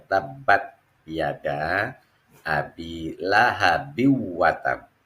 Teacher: ini huruf ba yang merupakan huruf qalqalah dimatikan. Nah, ketika dimatikan, maka dia dihukumi menjadi qalqalah kubro.